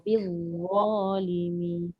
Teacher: Dha mesti hujung lidah dekat tengah gigi. Keluarkan.